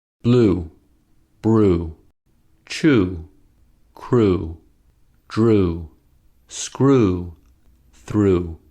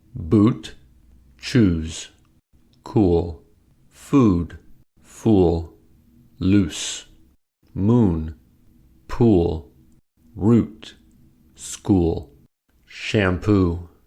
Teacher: to make ooh we make the lips tense so that the lips are rounded and protruding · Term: ooh sound